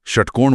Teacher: षट्कोण वाला श है मूर्धन्य मुड़ी हुई जीभ से मूर्धा पर और सड़क वाला स है दंत्य दांतों के स्पर्श से।